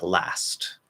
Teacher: we'll just drop the T in the ST ending, which will just disappear. Or it can come out as a weak T, last, or it can maybe be held, last. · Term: dropped T